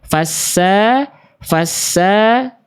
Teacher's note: Sin tinggal dijelaskan desisannya. Sin itu punya sifat namanya shofir teman-teman ya. Desis.